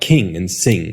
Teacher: it's basically just an N that you make using the back of your tongue instead of the front